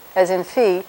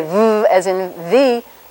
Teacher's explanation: you'll feel no vibration during that F. But when you say v, as in V, you'll feel a lot of vibration. That's your vocal folds vibrating.